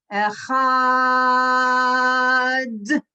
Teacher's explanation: when we say the word echad we're actually supposed to draw out the second syllable and emphasize the final consonant